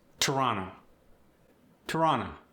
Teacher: A T at the beginning of the word stays crisp. However, the next T in the middle of the word often gets dropped.